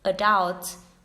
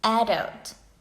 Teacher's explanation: There are some words, especially those with the French roots, have differing accents in American English and with the first syllable stressed in American English and the last syllable in British English. For example, adult is British English, but in American English they say adult.